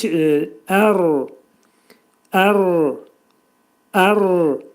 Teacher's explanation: Ra hərfinin məxrəci, dilin ucu yuxarı üst dişin altındakı ətə dəyməlidir